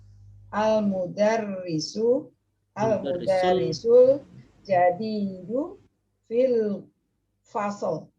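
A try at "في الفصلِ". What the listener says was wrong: Fil fasli. Ayo, fil fasli. Kalau lagi belajar nahwu, ya ini kita baca sampai di akhir fil fasli. Tapi dalam pembicaraan harian itu biasanya tidak terbaca ya.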